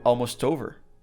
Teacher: Then the T from almost links to the word over.